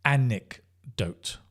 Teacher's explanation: Stress like on that first syllable